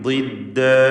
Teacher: ദ്വാദിന് ഇസ്തിത്വാല എന്ന സിഫത്തുണ്ട്, കൂടാതെ തഫ്ഖീം ചെയ്യേണ്ട അക്ഷരവുമാണ്. കസ്റായതുകൊണ്ട് കുറഞ്ഞ തഫ്ഖീം കൊടുക്കുക.